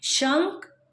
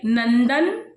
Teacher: तो आप जब इसको बोलेंगे, इसका उच्चारण करेंगे तो वो सारे शब्द नाक से आएंगे। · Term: अनुस्वार